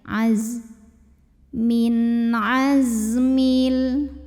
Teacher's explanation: Huruf zai sama seperti shad punya sifat yang tidak memiliki lawan, namanya sifat shafir. Ada desisan. Ini suaranya desisnya kayak lebah ya.